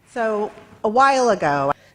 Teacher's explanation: in this chunk, the word while is the stressed word. So see how she goes higher in pitch here. · So a while ago, and then she drops on ago.